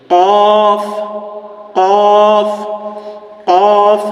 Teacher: কফ আমি কণ্ঠনালীর মধ্য থেকে উচ্চারণ করছি